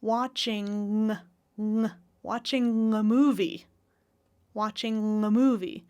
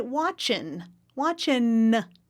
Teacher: Are you hearing the linking with an NG, with the tongue in the back? Or an N, with the tongue in the front?